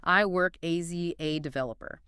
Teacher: It sounds disjointed, like each word is a separate block. It creates this staccato rhythm.